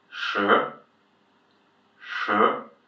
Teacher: second tone which we haven't seen yet it's a tone where you go just up